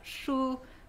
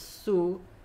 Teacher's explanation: posit a contrast between an apical s and a laminal s